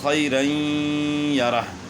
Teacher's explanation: یہاں 2 زبر کی تنوین کے بعد حروف یر ملون میں سے یا ہے، تو 2 زبر کی تنوین کا ادغام ہوا یا میں مع الغنہ۔ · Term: ادغام مع الغنہ